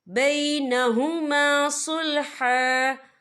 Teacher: وقف کی صورت میں ایک زبر پڑھا جائے گا، 2 زبر نہیں پڑھے جائیں گے۔